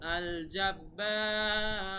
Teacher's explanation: আল জাব্বার, দেখেন এখানে জবরের বাম পাশে খালি আলিফ আছে, এখানে এক আলিফ টান দেওয়ার কথা ছিল, কিন্তু এক আলিফ না দিয়ে আমরা তিন আলিফ দিলাম, কারণ জাব্বার এখানে আমরা থেমেছি, না থামলে আমরা এক আলিফই দিতাম। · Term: মাদ্দে আরজি